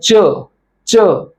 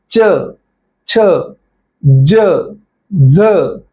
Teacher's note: ज्या वर्णांचा उच्चार करताना जिभेचे टोक हे कठोर तालूला स्पर्श होते तुम्ही आता उच्चार करून बघा च कठोर तालूला स्पर्श होत आहे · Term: तालव्य वर्ण